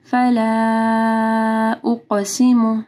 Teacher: فلا کے اوپر مد ہے، اس کے بعد حمزہ ہے، تو اس کو 4 سے 5 حرکات کے برابر لمبا کرنا ہے